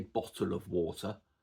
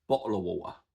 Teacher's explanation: So I don't pronounce the T's in bottle and water. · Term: glottal stop